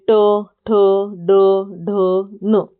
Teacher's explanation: जिन वर्णों का उच्चारण मूर्धा से होता है उन्हें मूर्धन्य कहते हैं।